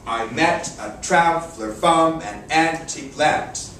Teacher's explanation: Traver from an antique lant the second syllable every other syllable syllables 2 4 6 8 and 10 are accented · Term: I am